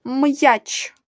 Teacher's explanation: перший звук м твердий приголосний